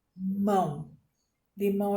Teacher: oxítona a sílaba tônica é a última